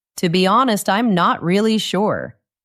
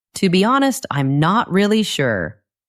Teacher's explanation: The words honest, really, and sure are stronger.